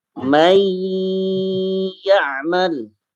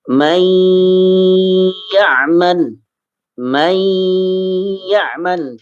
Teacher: nun sukun lebur ya dimasukkan ke ya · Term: Idgham Bighunnah